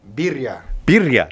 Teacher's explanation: I didn't roll my R. You got to trill the R there.